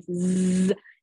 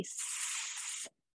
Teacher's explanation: So if you say Z, you can feel your throat vibrating. But if you say S, you don't feel anything. So some sounds like S are made with our voice box off. · some sounds like S are made with our voice box off. It's not vibrating, it's a voiceless sound. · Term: voiced sound